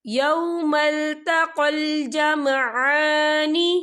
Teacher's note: عین کے پر کھڑی حرکات ہے، تو ہم اسے 2 یا 3 حرکت کے برابر کھینچ کے پڑھیں گے